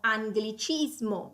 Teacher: pronuncia come biconsonante nel caso in cui questo gruppo GL sia preceduto da una N. Per esempio abbiamo anglicismo, vedete che GL e poi seguito dalla I è preceduto dalla N.